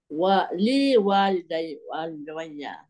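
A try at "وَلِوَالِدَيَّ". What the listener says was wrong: Wa panjang. Li walidaya. Walidaya.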